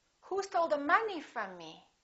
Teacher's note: from is a preposition so we don't stress it it's not a Content word it's a function word and me is a pronoun from me so both of those words are reduced